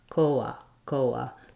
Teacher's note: No puff of air coming out. The O will just be a pure O, and the last syllable, rather than changing to an a schwa, will stay an ah.